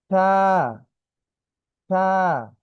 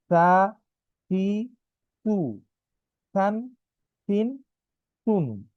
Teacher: জিহ্বার আগা, দাঁতের আগা, নরম আওয়াজ, কম টান। ঠিক আছে। অর্থাৎ আমার জিহ্বার যে আগাটা সেটি আমাদের দাঁতে লাগবে।